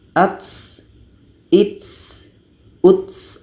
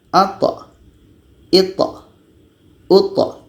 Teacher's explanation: Kita baca dengan ata, ita, uta. Ketika ta ini berbaris sukun atau mati, sifatnya qalqalah, bukan hamas, bukan berangin. Jadi kalau sifat hamasnya seperti ini, ats, its, uts.